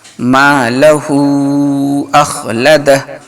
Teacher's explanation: ہا الٹا پیش ہو اور اس کے اوپر مد بھی ہے، اس لیے اس کو کم سے کم 2 الف کے برابر کھینچنا ہے